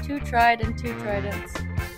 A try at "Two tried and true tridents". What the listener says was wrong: It's two tried and true tridents. You said two tridents.